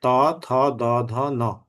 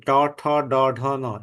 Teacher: আর যখন মূর্ধন্য ধ্বনি ট, ঠ, ড, ঢ, ন এগুলো যখন উচ্চারণ করি, তখন আমরা সেগুলো কি জিহ্বাটা উল্টে এসে সেটা কি আমাদের ওই একদম শক্ত তালুতে গিয়ে টাচ করে